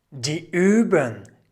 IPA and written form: diː ˈyːbʊŋ (die Übung)